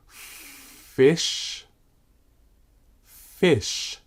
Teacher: pressing my bottom lip on the bottom of the top row of teeth and then I gently blow through those teeth and that space between the lip and the teeth try it